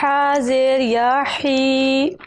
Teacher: یائے ساکن سے پہلے اگر زیر آ جائے تو وہ یائے مدہ ہوگا، یعنی یائے ساکن کو 2 حرکت کے برابر کھینچ کر پڑھا جاتا ہے، جیسے ہا زیر یا ہی۔